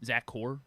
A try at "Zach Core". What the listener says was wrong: It sounds like you're saying Zach Orr. sounds like you're saying Zach Orr when you say that because it's Zach Core.